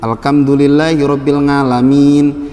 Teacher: kalau ngomong H itu jadi k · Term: medok